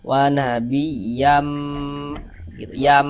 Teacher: Bunyi tanwinnya dimasukkan ke huruf mim. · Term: kita gunnahkan